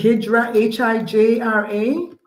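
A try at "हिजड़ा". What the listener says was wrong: Yeah, but it's pronounced Hijda. It is spelt with an R but pronounced with a D,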